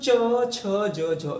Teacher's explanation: इनको बोलते समय, स्पर्श करते समय भी संघर्ष करना पड़ रहा था, इसलिए स्पर्श संघर्षी व्यंजन कहला रहे थे · जब आप इनको बोल रहे हो तो आपके अंदर की प्राणवायु संघर्ष करते हुए बाहर आ रही